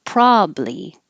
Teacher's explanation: you can have three syllables probably one two three or you can make it shorter and have two syllables